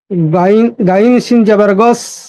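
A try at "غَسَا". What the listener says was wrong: গয়টা একটু সুন্দর হবে উচ্চারণটা।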